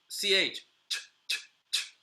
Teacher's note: If you go ch, you're going to see that there's a lot of explosion in the air. So when in doubt, you can just try on on your hand, right?